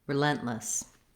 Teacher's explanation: The word relentless has the stress on the second syllable, lent, which means the letters R-E in the beginning are going to have a reduced vowel.